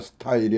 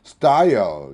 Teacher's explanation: S 다음에 T니까 격음화가 되겠네요. 스타일이 아니라 style 이렇게 되겠네요.